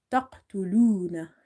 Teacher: So right now you have to say taqtuluna, and you will observe that qalqala is not much prominent